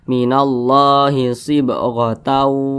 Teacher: Misalkan kita baca nih, minallahi sibghatau, maka terjadilah hukum idgham bi gunnah karena ada tanwin berjumpa dengan huruf wa